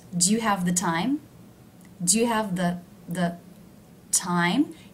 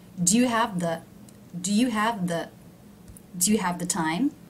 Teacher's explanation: Do you see how the word the is low in pitch? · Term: unstressed